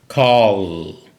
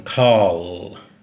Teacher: Put your hand on your throat for this first one, call. You can hear that double L kind of vibrate the throat. It's voiced.